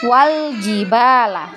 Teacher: Tidak kita baca lagi hamzah wasolnya, kita anggap tidak ada.